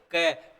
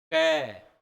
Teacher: आप बोल के देखो, कै बोलोगे तो अपनी जीभ कहाँ, जैसे ऐसे बोलेंगे ना कै, कै बोलेंगे तो जीभ पीछे चली जाएगी, जीभ का पीछे का भाग चौड़ा हो जाएगा और कंठों के पास श्वास वायु को रोक लेगी, रोक लेगी। अब देखो, आप बोल के देखो, कै बोलो, कै बोलना है आपको, अभी बोलना नहीं है, कैसे बोलने से पहले की स्थिति को ध्यान रखना है। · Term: कंठ्य ध्वनियां